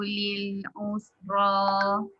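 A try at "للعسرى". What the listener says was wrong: Okey, jangan digabung sekali moncong sin dengan ain tu.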